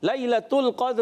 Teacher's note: لیلۃ القدر، لام کو ہلانا نہیں، قاف کو پر رکھنا ہے، دال میں کلکلا ہوگا، اور را کے نیچے زیر ہے، را کو باریک پڑھیں گے